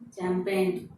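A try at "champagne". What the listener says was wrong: चैंपियन नहीं है, कैंपेन भी नहीं है, ये शैंपियन है, शैंपियन, शैंपियन।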